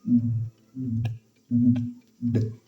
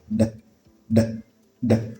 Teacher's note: So you say, d, d, d. It is a voiced fricative. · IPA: /ð/